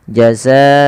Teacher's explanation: Yaitu adanya mad yang disebabkan karena adanya hamzah yang terletak setelah huruf mad. Dan dia wajib kita panjangkan empat atau lima harakat. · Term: mad wajib muttasil